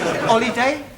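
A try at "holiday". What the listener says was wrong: you keep dropping your aspirate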